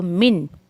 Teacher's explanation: یہاں پہ نون ساکن کی آواز کو ہم واضح کریں گے، عین کو لام میں مرج کریں، عل عل عل عل ایسا نہیں کرنا ہے، ٹھیک ہے۔